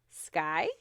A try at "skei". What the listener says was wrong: It's not pronounced that way. Ski, she, something like that. So it kind of has the sh sound to it.